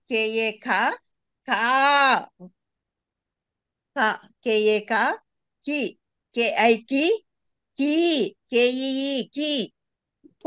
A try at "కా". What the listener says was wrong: నువ్వు రెండోసారి చెప్పేటప్పుడు చంపుతున్నావు దాన్ని, అది బ్రేక్ అయితా ఉంది.